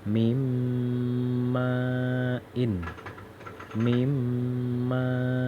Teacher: Jadi mimma langsung dari mim ke sini langsung ke sini. Jadi antara nun ini dihilangin, bacanya harus mimmain. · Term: idgham bi ghunnah